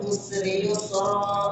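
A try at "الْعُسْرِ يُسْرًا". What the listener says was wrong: masih tebal sin yang kedua. Usri yusra tahan gunanya panjang.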